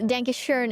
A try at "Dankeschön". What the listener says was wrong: You pronounce it a little bit English still. It's not dank. No, it's more like dank. Like donkey, like a U.